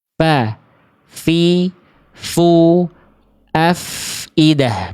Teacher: pasti ada nafas dan suara yang mengalir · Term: huruf fa